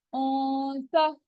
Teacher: فوراً ہی نون کی آواز کو چھپایا اور تا کے مخرج پہ زبان کی نوک کو لے آئے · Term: اخفا